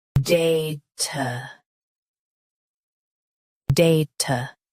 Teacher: Stress day. Keep ta soft and quick.